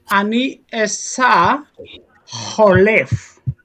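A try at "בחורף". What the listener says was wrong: Bachoref. nice, and that's a resh, choref, bachoref. resh.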